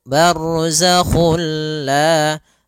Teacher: Nah, idgham bila gunnah juga sendiri, itu idgham yang kita namakan juga idgham kamil, yaitu kita memasukkannya secara utuh, secara seluruhan kepada huruf lam, sehingga tidak menyisakan sedikit daripada bunyi huruf nunnya, ya, sehingga langsung masuk barzakhul la.